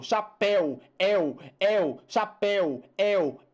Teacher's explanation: esse ditongo é aberto. Esse ditongo está no final da palavra, então deve ser acentuado, né? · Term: ditongo aberto